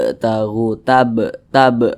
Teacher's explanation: samping ya huruf Qalqalah itu ada lima salah satunya huruf ba kalau dia sukun cara bacanya dipantulkan jadi mantul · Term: qqalah Sugra